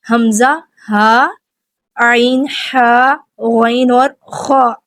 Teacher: حمزہ اور ہا حلق کے نیچے والے حصے سے ادا ہوتے ہیں جو سینے کی طرف ہے، عین اور ہا حلق کے درمیان والے حصے سے ادا ہوتے ہیں، غین اور خا حلق کے اوپر والے حصے سے ادا ہوتے ہیں جو منہ کی طرف ہے